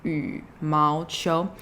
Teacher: remember to go a bit lower with that third tone